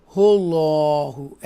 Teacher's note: یہ اللہ کے نام کو تفخیم کے ساتھ پڑھیں گے کیونکہ اس سے پہلے پیش ہے